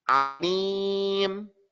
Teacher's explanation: the ain is pronounced by you moving your tongue backwards